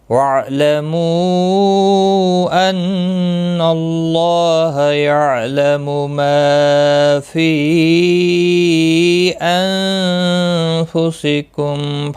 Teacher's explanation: نون ساکن کے بعد فا آیا ہے، اخفا حقیقی ہوگا،